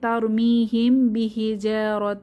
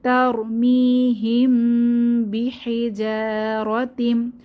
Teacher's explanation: যেহেতু মিম সাকিনের পরে বা হরফটি এসেছে তাহলে একটু গুন্নাহ করতে হবে সময় ধরে রাখতে হবে